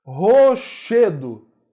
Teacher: Che é mais forte. Palavra paroxítona também.